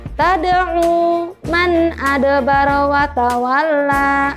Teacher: huruf dal merupakan salah satu huruf qalqalah. Jadi harus dipantulkan.